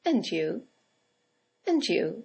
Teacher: In the second example, it's nice to see you again and you and you is a statement. It has a falling intonation and it's used to return the compliment or the greeting.